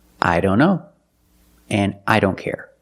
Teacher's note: A lot of times the T in don't is silent.